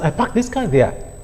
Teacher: I parked this car there could easily be pronounced as I parked this car there. The past tense morpheme will be elided for the purpose of simple production.